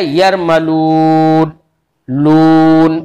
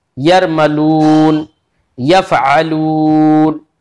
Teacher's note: यरमलून, यफअलून, तो लाम के बाद जो ऊ की आवाज आ रही है ये होंठों की खाली जगह से ही तो आ रही है। होंठ गोल हो गए, उनकी जो बीच की खाली जगह बचती है वहां से वाव मद्दा अदा हो जाता है।